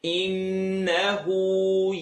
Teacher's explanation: Noon shadda, the noon with the W is rule number 3 of rhythm. Full nasal sound.